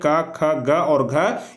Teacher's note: क वर्ग में जितने सारे भी वर्ण आते हैं उसका उच्चारण स्थान कंठ होता है, सिर्फ पांचवा वर्ण को छोड़ा करके।